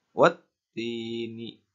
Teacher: Pada ayat pertama ada huruf yang bertasydid, maka dibacanya harus dimasukkan dari huruf wa langsung dimasukkan ke huruf ta.